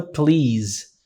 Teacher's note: Som de Z no final da palavra